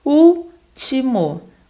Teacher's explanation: O último também é uma proparoxítona, né, gente? O U é a sílaba mais forte e ela foi acentuada corretamente na regra das proparoxítonas também.